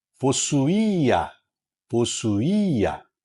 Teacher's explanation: Esse i é muito forte é Tônico e ele faz iato com o u que vem antes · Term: hiato